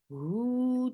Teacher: 2 counts long circular lips for dhamma